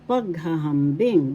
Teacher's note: the first and the fourth syllable has the accent